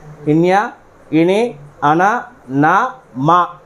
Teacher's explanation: ముక్కు ద్వారా గాలిని బయటకు వదులుతూ పలుకుతాం కాబట్టి వీటిని అనునాసికాలు అని పిలుస్తారు ఒక్కసారి వీటిని గుర్తుపెట్టుకోండి గత ప్రీవియస్ ప్రశ్న పత్రాల్లో వీటిని ఇవ్వడం జరిగింది ఇన్